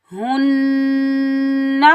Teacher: आगे हा के ऊपर पेश है, हा को हम नून के साथ मिलाएंगे। नून के ऊपर तशदीद है तो यहाँ हम एक अलिफ की मिकदार गुन्ना करेंगे और इस हा को हम सीने से अदा करेंगे